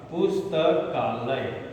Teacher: पुस्तक के अंत में, इस क में अंत में अ है और आलय के प्रारंभ में आ है। अब ये दोनों जब मिलेगा तो हो जाएगा आ और ये शब्द बन जाएगा पुस्तकालय।